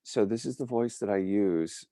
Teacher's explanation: it's a very husky type of voice, and it's got a thin sort of tone to it. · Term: Charlize Theron voice